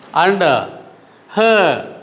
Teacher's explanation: before that letter R, if in any word there is a vowel, we should not pronounce that letter. So, it should be pronounced as dark. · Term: silent letter